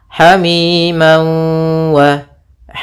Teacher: ini namanya Idam bunah atau Idam maal gunah cara membacanya yaitu masukkan tanwinnya ke wau sambil ditahan gunahnya dua harakat Hamim H tidak langsung Hamim wa G tapi tahan dulu kemudian